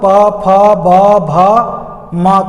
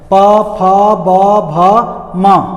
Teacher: दोनों ओंठ बंद हो जाते हैं और अचानक झटके के साथ खुलते हैं, ध्वनि निकलती है और तब प फ ब भ म का उच्चारण होता है। प फ ब भ म, ये पांचों अक्षर जो हैं ओंठ के बिना सटाए कोई माई का लाल उच्चारण नहीं कर सकता है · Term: ओष्ठ वर्ण